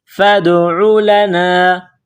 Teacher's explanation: دال ساکن ہے تو یہاں پر قلقلہ کریں گے